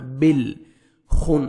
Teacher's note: بل خن، خواہ کو موٹا کر کے پڑھیں گے، نون مشدد ہے، غنہ کریں گے، نوز میں ساؤنڈ لے کے جائیں گے اور لاسٹ میں جب سٹاپ کریں گے سین ساکن ہو جائے گا۔